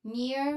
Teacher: It's relatively straightforward pronunciation with a short e sound followed by the ear sound.